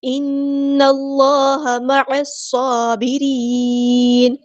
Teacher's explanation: نون پہ غنہ زمانی ہو رہا ہے الف کے برابر رکیں گے